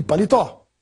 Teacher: a palavra paletó tem a sílaba mais forte na última